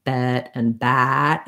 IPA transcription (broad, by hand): ɛ and æ